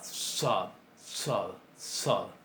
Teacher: La tzade serían para nosotros dos sonidos. En el árabe existe también, pero se ha convertido en una S enfática velarizada.